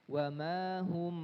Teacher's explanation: cara membaca Ikhfa Syafawi sama dengan membaca iqlab gimana caranya merapatkan kedua bibir